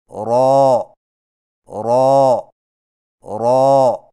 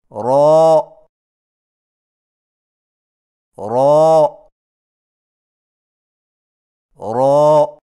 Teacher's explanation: را کی ادائیگی میں زبان کی نوک کی پشت کو اوپر والے دانتوں کے مسوڑوں سے لگا کر موٹی آواز میں پڑھیں